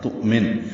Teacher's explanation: تؤمن حمزہ ساکن جھٹکے سے ادا ہوگا ، نون ساکن پہ وقفاً اظہار ہے، تؤمن، اور اگر ملانا